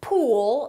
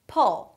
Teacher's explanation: The tense U is pool, a little longer in comparison to pull. It's not the same sound.